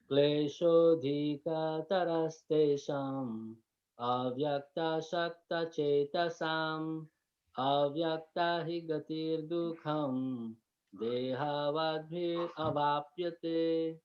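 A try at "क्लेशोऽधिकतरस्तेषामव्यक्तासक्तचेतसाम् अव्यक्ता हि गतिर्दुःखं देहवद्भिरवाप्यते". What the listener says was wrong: Beautiful. Very good. Very nice.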